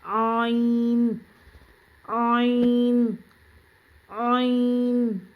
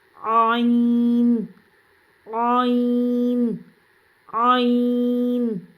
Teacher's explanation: اسی طرح سے آئین بھی حلق کے درمیانی حصے سے ادا ہوتا ہے. یہ بھی 3 حرفی ہے، اس کو بھی تھوڑا لمبا کر کے پڑھیں گے.